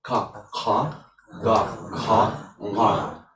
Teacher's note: with dot down, this is the nasalized pair for the velar group. So when Anuswara is changing, into the this nasal pair if the next sound is the velar sound, right?